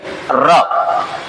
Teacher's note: र का उच्चारण करते समय जीभ फड़फड़ाती है, अतः र को कहा जाता है लुंठित व्यंजन।